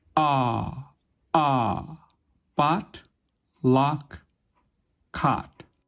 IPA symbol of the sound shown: ɑ